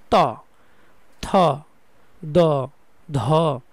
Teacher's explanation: দন্তবর্ণ। দন্তবর্ণ বলতে জিহব্বাটা দাঁতের সাথে লাগবে। উপরের মাড়ির দাঁতের সাথে লাগবে। যেমন ত থ দ ধ দন্তন প্রত্যেকটাই দাঁতের সাথে লাগবে।